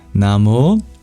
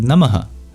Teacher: Namo is actually the word Namaha, just with some grammatical rules that change the ending, that change the Visarga into a labio-guttural monophthong O